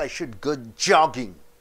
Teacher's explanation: You stress on jogging, it is a new information.